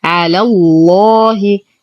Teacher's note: ننتقل من فتحة اللام إلى تجديد اللام المغلظة في اسم الجلالة جل في علاه لأنها سبقت بفتح، والألف تحذف بسبب التقاء الساكنين